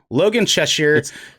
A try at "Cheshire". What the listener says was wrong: Just imagine the I is not in it. Cheshire.